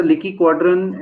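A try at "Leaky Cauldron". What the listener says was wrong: Cauldron, cauldron, not call. It's not quadrant. It's cauldron.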